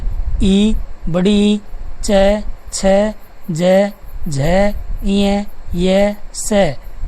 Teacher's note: इनका उच्चारण स्थान है तालु। और ध्वनि का नाम हो जाएगा तालव्य।